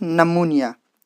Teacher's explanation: Here p sound is silent because this sound pattern is not allowed. So we have dropped this sound, p sound, and we pronounce it as pneumonia from n.